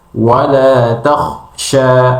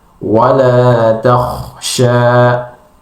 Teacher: Nah, itu suaranya terputus memang karena memang sifatnya adalah syiddat. Beda kha adalah rokhawa dan hamas, alirkan tanpa ada terputus.